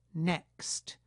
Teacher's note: This vowel is not nasalized, so it's essential that the velum close during the vowel and not remain open until the final stop consonant is produced.